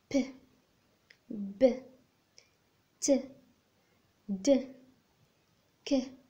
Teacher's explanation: هما الأصوات اللي كنجوهم اللي كنحبسوا الهواء وكنعاودوا نطلقوه دغيا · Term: plosives